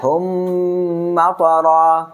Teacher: মিম সাকিনের বামে মিম আসলে গুন্না সহ পড়তে হয় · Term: ইদগাম শাফাওয়ি